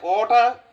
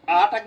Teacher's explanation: অটা হচ্ছে হ্রস্ব স্বর, আটা কিন্তু দীর্ঘ